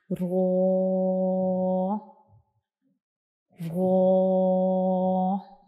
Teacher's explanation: जब हम रॉ को पढ़ते हैं तो हमारी जो आवाज़ होती है वो हमारे मुंह के अंदर भर जाती है, यानी आवाज़ बाहर नहीं आती जब हम रॉ को पढ़ते हैं, जैसे कि रॉ रॉ। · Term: भारी आवाज़